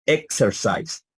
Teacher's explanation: hay un cierre como de una k